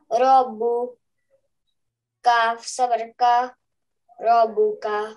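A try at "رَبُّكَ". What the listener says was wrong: No, press the ba for half a second. Yeah, rabbuka.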